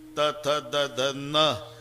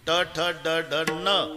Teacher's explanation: नळ्याचा न उच्चारा तर जीभ दाताला स्पर्श करणार, बाणाचा न उच्चारा अजिबात दाताला लागत नाही, टाळूला.